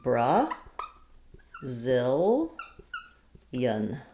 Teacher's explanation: moving on to Brazilian, it's still stressed on the zil.